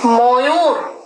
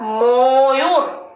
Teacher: ময়ের সঙ্গে কিন্তু ওকার চলে আসছে